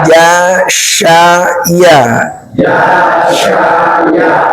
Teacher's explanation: tengah lidah dengan langit-langit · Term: jim syin ya